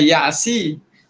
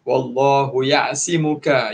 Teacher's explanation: Ya'simuka, sad. Huruf sad kena ditebalkan. Jangan ya'si.